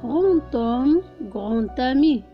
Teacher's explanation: les adjectifs qui se terminent par un D sont toujours prononcés T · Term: liaison